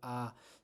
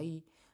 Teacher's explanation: para hacer una vocal a tiendo a abrir más la boca y por tanto la lengua baja